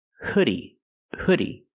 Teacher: use the short uh sound like book and look good